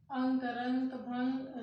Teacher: उनके उच्चारण में क्या होता है नाक से अधिक सांस निकलती है और मुख से कम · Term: अनुस्वार